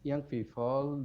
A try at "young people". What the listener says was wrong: again the p and the f. Young people, young people with a p, not a f. So we have these sounds in English, p and b, and they are different to f and v.